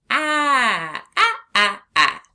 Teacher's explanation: the short a sound is a continuous sound, which means we can stretch it.